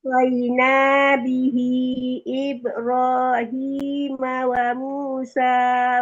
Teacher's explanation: bihinya panjangnya sampai 4 harkat ya, itu terlalu dikit banget, baru 1 harkat